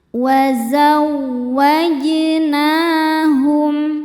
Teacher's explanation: jim hukumnya qalqalah sugro karena ada huruf jim di tengah-tengah bacaan dan sukunnya sukun asli. Dibacanya dipantulkan dengan pantulan yang kecil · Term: qalqalah sughra